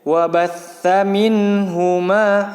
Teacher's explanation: di situ ada sa yang bertasdid sama ditekan